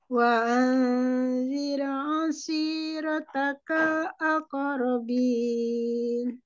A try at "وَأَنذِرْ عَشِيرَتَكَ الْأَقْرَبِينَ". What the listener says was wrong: Kofnya dipantulkan ini lebih jelas. Mungkin dikonsistenkan lagi pada matlabi Umi. Ada yang panjangnya pas, ada yang kelebihan sedikit ya.